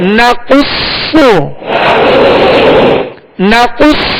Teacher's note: قاف اور صاد دونوں حروف ہیں مستعلیہ میں سے لہذا پوری یعنی موٹا پڑھیں گے